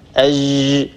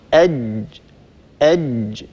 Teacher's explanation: الجيم هي حرف مجهور وهي حرف شديد، وننتبه لهذه الصفة في حرف الجيم. الجيم الصحيحة الفصيحة هي جيم شديدة ينحبس الصوت عند النطق بها